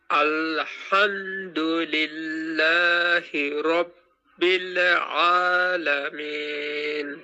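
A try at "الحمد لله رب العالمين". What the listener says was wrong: এইযে রব্বিলে লিখেছেন রব্বিলে এমন শোনা গেছে কিছুটা রববিলে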